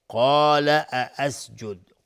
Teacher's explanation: قاف از حروف استعلاس غلیظ تلفظ میشه، الف هم تابع قاف غلیظ تلفظ میشه